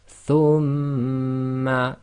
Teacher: shadda you always hold for 2, and we covered this in English, it's called gemination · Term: Ghunna